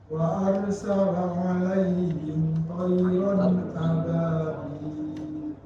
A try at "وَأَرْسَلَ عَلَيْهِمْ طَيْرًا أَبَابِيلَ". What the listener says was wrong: Nah itu tadi, ro-nya itu kan harus tebal. Jangan dibaca arsala tapi ar.